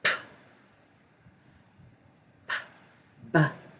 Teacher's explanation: They're made exactly the same on the lips. The difference is voicing.